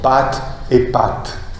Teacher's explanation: Parce que les deux T, même s'ils sont conservés du point de vue graphique, sont simplifiés du point de vue phonétique. La seule différence entre les deux mots pâte et pâte est l'allongement du A.